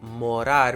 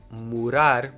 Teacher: the difference between the Brazilian pronunciation of certain words like morar with an a sound and the reduced European Portuguese Mur with an u sound